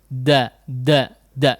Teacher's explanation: Disentuhkan kepada pangkal gigi seri atasnya ya, ujung lidahnya. Da, sehingga betul-betul bisa menjadi tipis ya, tapi tidak dimuncratkan ya. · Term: huruf dal